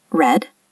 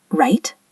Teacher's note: we curl our tongue slightly back, but it doesn't touch the roof of your mouth.